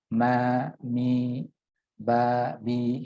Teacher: keduanya diucapkan dengan cara intibaqus syafatain, yakni merapatkan, ya, kedua bibir